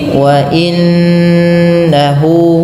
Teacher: Di sini ada bacaan bunyi gunnah ya, menahan. Wa inna, tidak hanya sekedar mentasydidkan nun, tapi perlu ditahan ya